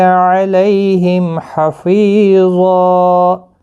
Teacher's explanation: حفیظا ویقولون، اس طرح سے پڑھنا ہے، اور وقف کی صورت میں ایک الف کی مقدار کے برابر کھینچ کر پڑھیں گے، ضا مستعلیہ بھی ہے، پر پڑھا جائے گا، الف بھی پر پڑھا جائے گا اس کے ساتھ